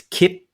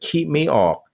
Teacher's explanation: caught right there as the tongue hits the pallet and so what burmese people would do is glottalize before the tongue hit